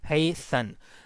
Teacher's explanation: So as we have talked already, that a syllabic consonant would always occur on in unstressed syllable. So now in hasten we have two syllable. You know, hasten. The second syllable is made by this syllabic n. So this is the second syllable, which is unstressed syllable.